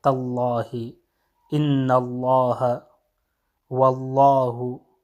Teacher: لام سے پہلے چونکہ فتحہ ہے تو یہاں پہ تفخیم ہوگا